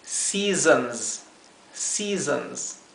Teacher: segunda esto es una palabra difícil de pronunciar al comienzo porque la primera s es una s suave la segunda s es una s vibrada